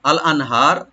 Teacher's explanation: নুন সাকিন এখানে আমরা জাহার করব, এখানে গুণা হবে না। আর হাটাকে রাইট দিয়ে একালিপ টানবো, আর রা একটু আমরা ডিপ করে পড়বো।